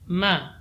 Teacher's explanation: Ya, mim di sini juga tipis. Jadi idmam rapatnya bibir ketika mengucapkan huruf mim itu lebih ringan dibandingkan ba. Ma tidak boleh dibaca tebal.